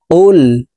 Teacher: কফকে জিহ্বার গোড়া তার বরাবর উপরের তালুর সঙ্গে লাগাইয়া উচ্চারণ করতে হবে